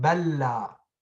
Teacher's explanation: He's telling you أولي مثل وجنس, the first of the two identical letters, if the first is sakin, merge it like balla, la, lam sakina followed by lam with haraka. Drop the first lam, stress the second. So you're gonna read it just like that, balla. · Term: idgham